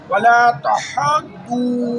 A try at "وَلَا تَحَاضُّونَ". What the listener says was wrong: ولا نہیں کھینچے گا حاض زیادہ کھینچے گا ولا تحاضون وہ نہیں کھینچے گا ولا تحاضون تحاض